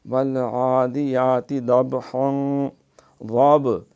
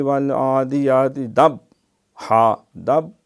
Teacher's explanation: ضاب یہ با پہ قلقلہ ہے